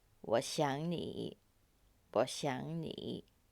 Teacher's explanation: in the middle, the verb 想, we pronounce it as the second tone because of the 你 after it.